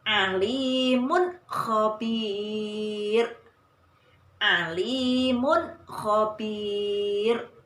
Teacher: idhar halqi, dibaca jelas dan pendek tanpa mendengung atau samar